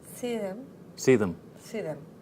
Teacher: if I do the contraction, if you see them, then it's like see and them becomes one word.